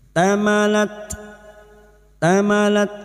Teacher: tak sukun huruf tak yang memiliki sifat hamas dan syiddah